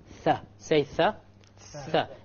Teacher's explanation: Notice the tongue will be outside of the incisors by a millimeter if you like.